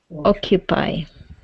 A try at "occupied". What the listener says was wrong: Okay, give me that D ending. Occupied.